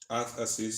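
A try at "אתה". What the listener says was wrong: Actually, you pronounce it ata. It's not at, but it's written at, but you pronounce it ata.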